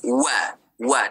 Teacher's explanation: tak ada satu huruf pun yang kena muncung kecuali pada huruf wau. Huruf wau saja kena muncung.